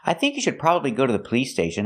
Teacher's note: we hear the D and should is a stop d not you should but you should put the tongue up and